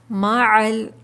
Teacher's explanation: مَعَ عین حلق کے درمیانی حصے سے ادا کریں گے